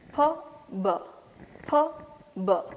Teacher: The first sound will be voiceless, Second sound is voiced.